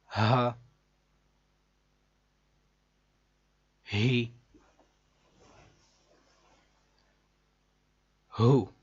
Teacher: ہ یہ حلق کے نیچے والے حصے سے ادا ہوتا ہے. ہ جیسے سینے سے ڈائریکٹ آواز نکلتی بغیر کسی جگہ پر رکے ہوئے.